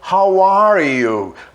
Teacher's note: o r vai direto para o y então how are you a gente faz um link aqui eu emendo r com y faz uma palavra só